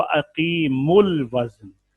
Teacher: اب میم لام کے ساتھ ملے گی